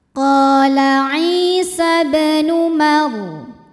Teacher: Kemudian ba hukumnya qalqalah sughra, sebab ada huruf qalqalah yaitu ba yang sukunnya sukun asli dan ada di tengah bacaan. Cara bacanya ba dipantulkan dengan pantulan yang kecil.